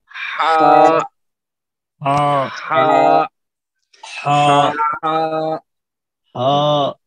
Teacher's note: ہا جو ہے درمیانی حلق کے حصے سے ادا ہوتا ہے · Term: حلق کے حروف